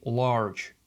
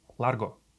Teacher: In English we tend to prolong our vowels but in Spanish they are much much shorter